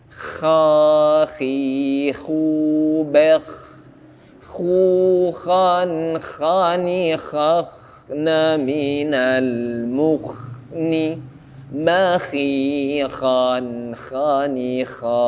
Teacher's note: Kha, tapi tidak berlebihan, tidak berlebihan ya. Yang jelas ada suara ngoroknya walaupun sedikit ya. Karena itu memang makhrajnya di situ. · Tenggorokan atas satu lagi hurufnya huruf kha, dikasih nafas.